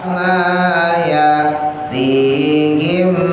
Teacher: tahan idgham mim mati ketemu mim